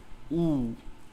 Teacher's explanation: Doma itu bukan o tapi u, memonyongkan kedua bibir.